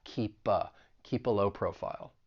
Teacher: We can link that consonant sound in keep with that schwa sound in the article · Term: linking